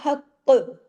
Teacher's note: لیکن اگر ہم رکیں گے تو حق، یعنی ڈبل بھی کرنا ہے، ہیوی بھی کرنا ہے، سختی سے جوڑنا ہے، اور اس کی آواز میں سختی بھی ہو اور موٹا پن بھی ہو اور ساتھ میں کلکلہ بھی ہو